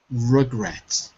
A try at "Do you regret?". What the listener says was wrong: Yeah, not even re, it's ra. Regret. It's very easy if you speak Brazilian Portuguese to say he, like you would, like Rio Janeiro. But for us, it's re or ra.